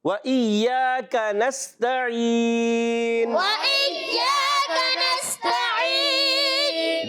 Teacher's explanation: بعض بچے وإياك قاف کو موٹا کر دیتے, کاف ہے, کاف باریک ہے